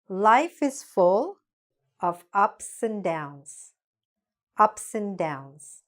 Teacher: And is usually pronounced just like n